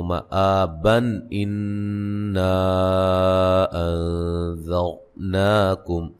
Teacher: نون تنوین کا اظہار ہوگا، غنہ نہیں کریں گے